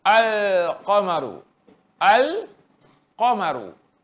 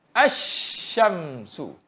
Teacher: Maka wajib menghilangkan keseluruhan zatnya ke dalam huruf syamsiah. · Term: idgham syamsiah